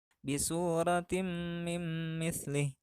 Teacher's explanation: Contoh bacaan idghamnya terdapat dua, yaitu tanwin menghadapi mim, maka tanwin di sini dibaca lebur karena menghadapi huruf idgham yaitu mim